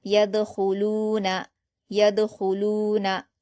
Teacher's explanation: ख्वा पर पेश की हरकत है, ख्वा को पुर पढ़ेंगे और जल्द पढ़ेंगे।